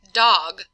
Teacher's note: We can also make the D sound for like dog, where we have the tip of the tongue reaching up to touch the roof of the mouth at the alveolar ridge